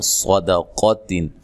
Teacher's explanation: صاد کو خوب موٹا کر کے ادا کریں، قاف کو موٹا ادا کریں